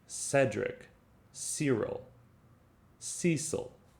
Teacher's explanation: cedric which is pronounced with a soft c in other words it's pronounced like an s so cedric cyril cecil you hear how it's a very soft